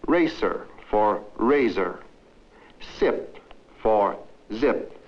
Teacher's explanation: the Latin American has difficulty with the S and Z Sounds in English